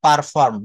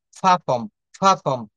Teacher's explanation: আমরা বলি না পারফর্ম, নো, ফা ফর্ম। এখানে আর বা রটা টোটালি সাইলেন্ট থাকবে।